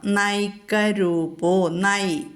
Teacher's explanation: ന എന്നുള്ള അക്ഷരം ആദ്യാക്ഷരം വന്നതുകൊണ്ട് അവിടെ ന ദന്ത്യമായിട്ട് ചൊല്ലണം. പല്ലിന്മേൽ നാവ് വന്ന് മുട്ടണം.